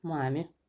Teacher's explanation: Amma vuruğu A-ya düşdüyünə görə biz artıq e yeni i tələffüz edirik. Amma o demək deyil ki, i ilə bitir.